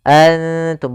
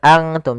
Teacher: Maka cara membacanya samarkan kepada huruf ta. Nun makhrajnya di langit-langit, ujung lidah menempelkan dengan langit-langit. Maka makhraj huruf ta mendekati huruf nun, maka dinamakan di sini dengan ikhfa aqrab. · ikhfa itu menyamarkan huruf kepada huruf setelahnya, yaitu nunnya disamarkan kepada huruf ta